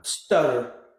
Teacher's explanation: So what I hear is the t sound. Okay, it's the t where my tongue, it kind of touches the back of my upper teeth.